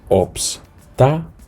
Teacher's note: El golpe de voz recae sobre la antepenúltima sílaba.